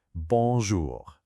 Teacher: Then we have J O U R. It's got our guttural R at the end.